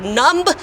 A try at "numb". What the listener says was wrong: Numb. You don't need to say the B. The B is silent.